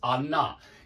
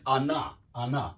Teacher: Anna, the stress is on the A